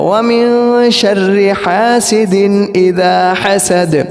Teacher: آخر کے اندر دال کے اندر قلقلہ ہے